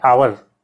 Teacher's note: हावर नहीं पढ़ते इसको, आवर पढ़ते हैं, तो ये अ से शुरू हो रहा है, और ये जो है वावेल साउंड से शुरू हो रहा है।